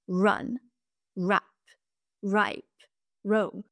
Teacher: comparé au français le r anglais a un son moins vibrant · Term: le r américain